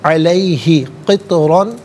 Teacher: تو ساکن ہے لیکن حرف قلقلہ ہے تو آواز لوٹتی بھی محسوس ہونی چاہیے